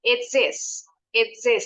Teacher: Tapi kalau ngomongnya cepat, H-nya nih suka dibuang kalau sama penutur asli bahasa Inggris.